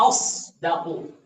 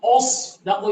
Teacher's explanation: حمزہ کو مستفل پڑھنا، باریک پڑھنا، اور صاد کو موٹا پڑھنا